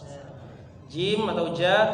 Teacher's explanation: ke tengah lidah Tengah lidah huruf bertemu dengan apa aja ja Tengah lidah bertemu dengan langit-langit bagian atas langit-langit mulut